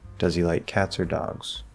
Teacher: i'm putting those options into brackets rising on the first falling on the second and i'm saying these are the two options i want to